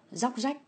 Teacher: Nếu mà ta nói từ thuần Việt á, thì cái róc rách này nó giống như cái âm r với âm giờ á, là chúng ta sẽ biến thành âm z hết. Cho nên ta sẽ đọc là róc rách như vậy.